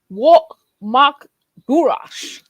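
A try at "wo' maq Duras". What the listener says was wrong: That was actually really good, except the GH, make it a little softer. So wo mag Durash. Wo mag Durash. Durash.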